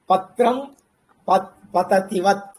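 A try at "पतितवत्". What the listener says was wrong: పతితవత్. పతతివత్ కాదు, పతితవత్.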